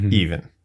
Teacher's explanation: to the rule because the word even yeah is e-v-e-n and it's a long e and then the second e becomes the schwa sound even it's actually like not pronounced it's just e v n